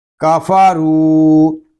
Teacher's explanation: کاف زبر کا، فا زبر فا، کافا، را واو پیش رو، کافا رو، را کو پر پڑھیں گے کیونکہ را کے اوپر پیش ہے، اور را کو ہم ایک الف تک کھینچ کر پڑھیں گے کیونکہ یہاں پہ یا واو مدہ ہو رہا ہے۔